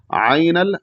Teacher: ऐन को हलक से भी अदा करेंगे और या की तरफ मायल करके इसको मारूफ पढ़ेंगे